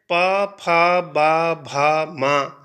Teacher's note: जो है वह षट स्पर्श व्यंजन है इनको कहने पर इनके इनका उच्चारण करने पर हमारे जो होठ होते हैं वह आपस में मिल जाते हैं · फेफड़ों से आने वाली हवा है वह हमारे होठों को बंद करके इनका उच्चारण करती है